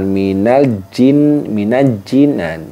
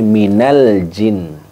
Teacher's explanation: Al lamnya itu dibaca jelas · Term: alif lam qamariah